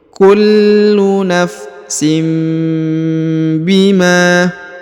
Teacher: harakat tanwin bertemu dengan ba harakat I maka dia berubah menjadi mim Ya ditahan dan didengungkan